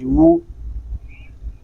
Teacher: واو کو جب ادا کریں گے تو ہونٹ مکمل گول ہوں گے